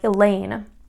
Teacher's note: that second syllable is going to be the one that is accented